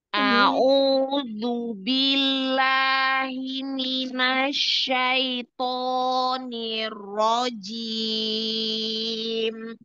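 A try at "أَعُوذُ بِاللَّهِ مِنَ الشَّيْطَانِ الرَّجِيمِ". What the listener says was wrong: Oh, tebal, roh tebal. Jimnya jangan terlalu maju lidahnya. Di tengah ya. Tengah tengah lidah dinaikkan di langit-langit yang paling itu paling tengah paling apa ya kayak kubah itu ya ya jadi jangan terlalu maju kalau maju je je jangan je nggak ada nafasnya je je diulangi tautnya.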